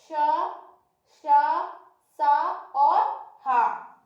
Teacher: जब हम श और श का उच्चारण करते हैं तो एक विशेष प्रकार की घर्षण के साथ हमारी प्राणवायु हमारे मुंह के बाहर निकलती है। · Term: ऊष्म व्यंजन